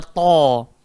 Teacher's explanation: Hujung lidah kena langgar bahagian gigi atas, belakang gigi atas, dan sifatnya kena gemuk. Dia bukan to'a je, dia kena ta.